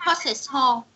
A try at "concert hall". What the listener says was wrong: Rồi cái chữ hall mày đọc giống như là chữ bo thì này là hall được chưa?